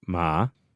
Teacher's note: when it comes to third tone the way to do that is to just go low